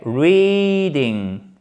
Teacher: avec l'accent tonique qui se trouve évidemment sur la première syllabe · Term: I long